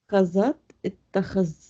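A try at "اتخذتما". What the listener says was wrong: नो नो नो नो नो, नो तानी।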